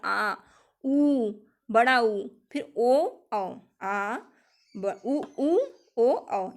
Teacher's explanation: जिन स्वरों के उच्चारण से जिह्वा का पश्च भाग सक्रिय होता है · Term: पश्च स्वर